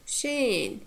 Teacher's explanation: first syllable is weak. It has short vowel, and the next one is strong. It has long vowel.